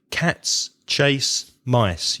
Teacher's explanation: You hear cats and mice that are stressed, but the chase is a bit softer. If I add more words, then you'll notice that the time it takes me to say the sentences is more or less the same.